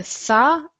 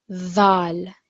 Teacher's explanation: there's more of a sort of buzzing sound more of a vibration